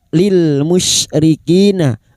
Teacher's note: Lam sukun lil musyrikina syin huruf syin wastul lisan atau tengah lidah